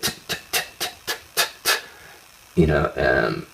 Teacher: The T is a percussive sound. You can't hold a T